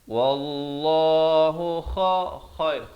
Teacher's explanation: Khair di hujung kerongkong.